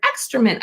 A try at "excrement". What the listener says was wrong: Plus, I think you said extra mint. I think you said extra mint. I think you said extra mint.